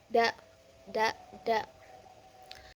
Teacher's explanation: Da ini keluar dari antara lidah dan gusi. Kemudian cara keluarnya itu infari.